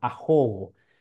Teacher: en el Castellano antiguo la H tenía sonido y eso se traslada al guaraní trae su sonido